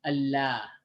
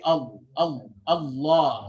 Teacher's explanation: Allah, but if you make it heavy, Allah, right? So the back of the tongue is rising to make it heavy.